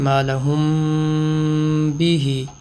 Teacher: میم ساکن اور اگلا حرف با، تو اخفاء شفوی 3 سیکنڈ کا میم پہ غنّہ کریں گے۔ اس غنّے کا نام اخفاء شفوی اس لیے رکھا ہے کہ میم ہونٹوں سے ادا ہوتا ہے.